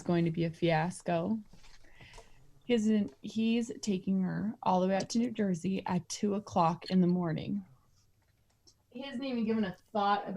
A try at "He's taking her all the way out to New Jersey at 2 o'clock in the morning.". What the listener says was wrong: Go back. You're mad again.